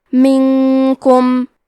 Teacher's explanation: کلمت منکم میں نون ساکن ہے، پھر حرف الکاف ہے، کاف حروف الاخفاء میں سے ہے تو ہم یہ حکم کو غنہ کے ساتھ ادا کریں گے